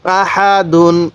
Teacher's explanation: হা টা উচ্চারণের সময় মুখ দিয়ে হালকা বাতাস বের করব